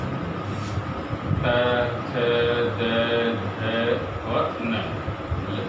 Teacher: इनका उच्चारण स्थल दांत होते हैं, इसलिए ये वर्ण दंत वर्ण कहलाते हैं।